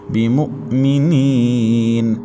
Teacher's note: نون کے بعد یا ساکن، اس سے پہلے زیر تو یا مدہ ہے، 1 الف تک کھینچیں گے اور لاسٹ میں وقف بالاسکان ہوگا۔